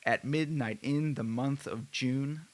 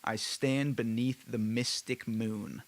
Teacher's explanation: what Shakespeare employed in his plays basically what that means is each line has an alternating pattern of stressed and unstressed syllables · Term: iambic tetrameter